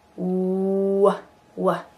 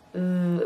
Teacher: You have to really tighten your lips together, w, like the oo shape, versus V, v, which uses your lip against your teeth.